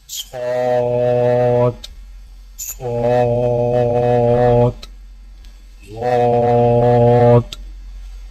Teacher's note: صاد، صاد کی ادائیگی میں زبان کی نوک کو سامنے والے نیچے کے 2 دانتوں کے کناروں سے مضبوطی سے لگا کر اور زبان کے پچھلے حصے کو تالو کی طرف بلند کرتے ہوئے موٹی اور سیٹی جیسی آواز میں پڑھیں